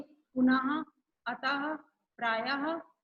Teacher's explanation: जो दो बिंदी रहता है उसे कहते हैं विसर्ग। इसका उच्चारण हा की तरह होता है, जैसे पुनः, अतः, प्रायः आदि।